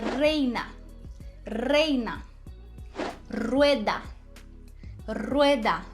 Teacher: o r no início de palavra vai ter um som vibrante